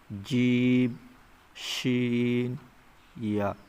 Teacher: 6 নম্বর মাখরাজ জিবের মাঝখানে এবং তার বরাবর উপরের তালুর সাথে লাগিয়ে উচ্চারিত হয়